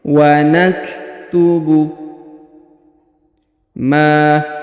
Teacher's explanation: huruf kaf, maka kita berikan hembusan tipis